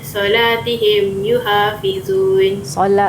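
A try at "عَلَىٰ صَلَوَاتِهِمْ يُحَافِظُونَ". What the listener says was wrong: Ada baris kat situ. Okey, solawatihim yuhafizun.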